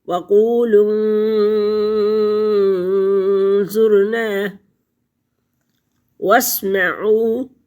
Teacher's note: واو ساکن پہلے لفظ پر پیش ہے تو واو مدہ ہے، اور اس واو مدہ کو ہم 2 الف 4 الف 6 الف تک پڑھ سکتے ہیں، کیونکہ ہم نے یہاں پہ وقف کیا ہے، اور وقف کریں گے، سانس لیں گے، وقف مطلق ہے تو۔